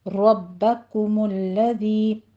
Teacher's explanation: کے اوپر میم کے اوپر ضمہ ہے، ہونٹ گول کر لیجئے، ذی میں ذال کو نرمی سے پڑھنا ہے، سیٹی کی آواز نہیں آنی چاہیے